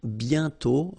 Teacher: You write it, but you don't pronounce it. And then the final T is not pronounced.